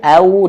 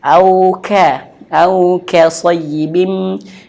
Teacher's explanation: hati-hati huruf waw, au dimonyongkan, kafnya tipis